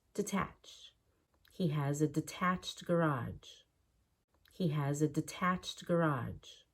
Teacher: you want to get used to reducing that first syllable to have better Rhythm